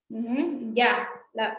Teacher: es la ya, suave no aspirada, palatal.